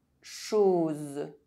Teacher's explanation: O is pronounced [o] when followed by a [z] sound